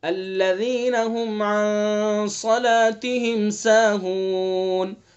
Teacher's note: صاد کو پر کریں گے چونکہ حروف مستعلیہ میں سے ہے